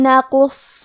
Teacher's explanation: قاف حروف تفخیم میں سے ہے، لہذا ہم یہ حرف کو موٹی آواز میں پڑھیں گے۔ حرف الصاد کو بھی بھاری آواز میں پڑھیں گے اور اس کو 2 حرف کے برابر بھی، کیونکہ اس پہ تشدید ہے · قاف کی ادائیگی زبان کے جڑ اور تالوں کے نرم حصے سے ہے۔ قاف حروف تفخیم میں سے ہے، لہذا ہم یہ حرف کو موٹی آواز میں پڑھیں گے۔